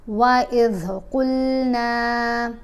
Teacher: ذال کو ادا کرنا ہے، زبان کو دانتوں کے درمیان میں رکھیں